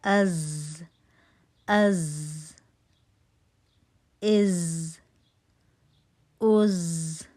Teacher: تھوڑا سا buzzing sound ہے